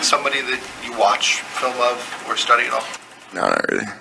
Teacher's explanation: that's a lot of vocal fry in there